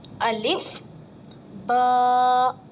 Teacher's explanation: یہ با کے ساتھ الف جڑا ہوا ہے، اس کا مطلب اس کو ایک الف کے برابر کھینچ کر پڑھنا ہے